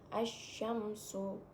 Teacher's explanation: Jadi cara membacanya alif lam tidak perlu dibaca, langsung dimasukkan ke huruf shin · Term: alif lam syamsiyah